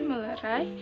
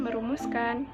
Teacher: Proses hilangnya fonem N pada men dan pen terjadi sebagai akibat pertemuan morfem men dan pen dengan bentuk dasar yang berawal dengan fonem L, R, Y, W, dan nasal. Contoh, Men plus lerai sama dengan melerai.